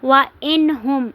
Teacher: نون ساکن کے بعد ہا آ رہا ہے تو اس میں ہم نون کو ظاہر کر کے پڑھیں گے